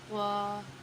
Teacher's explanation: طوا، زبان کی نوک اور ثنایا علیہ کی جڑ، یعنی ہم جب زبان کی نوک کو اوپر اور نیچے کے دانتوں کو جڑ میں لگائیں گے تب ہمارا ادا ہوگا طوا۔